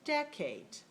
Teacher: is clear and stressed and that is the first one and the second one is clear but it's unstressed so it's lower in tone high low decade okay how about the other word that was